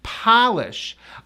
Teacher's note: That O is pronounced like ah, mouth big, ah.